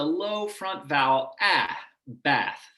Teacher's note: i speak uh a sort of lower midwest dialect and so when i say this word b-a-t-h i use a low-front vowel